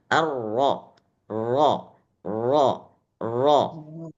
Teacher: kalau tafkhim dia rnya ujung lidahnya itu getarannya Hanya Sekali Saja tikrarnya sekali saja ulang ke apa namanya getaran getaran ujung Ridah